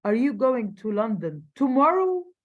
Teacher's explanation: He's stressing the word tomorrow. ليه؟ لأنه عايز يعرف أنت رايح tomorrow ولا any other day.